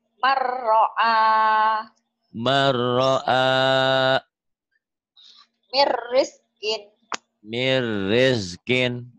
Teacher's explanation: Diidgomkan, dimasukkan, dileburkan tanpa disertai dengung dan tanpa ditahan. Man ro'a jadi mar ro'a. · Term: idgom bila gunnah